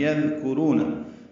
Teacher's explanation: دال نرمی سے پڑھا جائے گا، کاف باریک ہے، را پر ہے، رو و مدہ دو حرکات لمبا کریں گے.